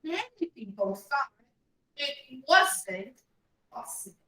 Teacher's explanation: Often it goes up, then down on the last word.